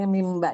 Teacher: Oh, yang kamilah yang ini mimba ya saja. Mimba itu nun sukun bertemu dengan ba itu dibaca berubah jadi mim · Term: iklab